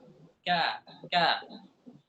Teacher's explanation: lidah keluar dari pangkal lidah dengan langit-langit lembut di atas kemudian di atasnya sedikit pangkal lidah dan langit-langit lembut dan langit-langit keras itu huruf Kaf